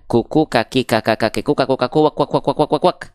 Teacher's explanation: makhrajnya untuk huruf Kaf dilafalkan dari aqsal lisan ya istilahnya aqsol lisan ya lisan itu artinya lidah aqsol itu artinya paling dalam atau Pangkal lidah paling dalam berarti aqas lisan adalah eh pangkal lidah atau lidah pangkal ya · huruf kaf itu dilafalkan dari tepi lidah, pangkal lidah kita. Nih lihat ya, area yang berwarna ungu.